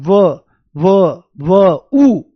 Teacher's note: जब आप व को बोलते हो तो आपको ऊ की आवाज आती है, बहुत हल्की सी, व ऊ की आवाज आती हुई दिखाई देती है। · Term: अर्धस्वर